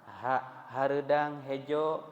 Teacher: Maka perhatikan betul-betul, bedakan masing-masing pengucapan huruf sesuai makhrajnya atau tempat keluarnya. Ha dari tenggorokan bagian bawah, tapi bukan ke dada ya